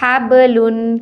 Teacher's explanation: ہا زبر با، حب، لام دو پیش لن، حبلن۔ یہاں با کلکلا ہے، حروف کلکلا میں سے ہے تو یہاں ہم کلکلا کر کے پڑھیں گے۔ کلکلا کا مطلب حرف کو حرکت دینا۔